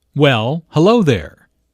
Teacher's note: notice the emphasis on hello which shows that did not expect to see Julia